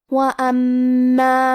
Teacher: ہمیں میم کو 2 حرف کے برابر پڑھنا ہے کیونکہ تشدید کی اصلیت 2 حرف ہے. جیسا کہ یہاں حرف المیم ہے تو یہ 2 میم ہے، میم ساکن اور میم متحرک.